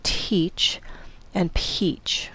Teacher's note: The vowel E is okay, but watch the consonants. In English, teach and peach, the T and the P are aspirated, so there's a bit of an H sound.